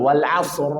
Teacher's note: Ra sukun karena waqaf, sebelumnya sukun, sebelumnya fathah atau dhammah wajib dibaca tafkhim, tebal.